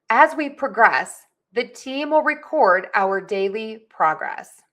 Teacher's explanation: stress syllable 1 in the noun version and syllable number 2 in the verb version